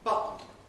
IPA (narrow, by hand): ˈbʌʔn̩